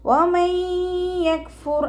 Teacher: നൂൻ സാക്കിനയ്ക്ക് ശേഷം ഇദാം ബിഗുന്നയുടെ അക്ഷരമായിട്ടുള്ള യാ വന്നു, നൂൻ സാക്കിനയെ യായിലേക്ക് ലയിപ്പിച്ച് ഉന്നയോടുകൂടി ഓതി കൊടുക്കുക.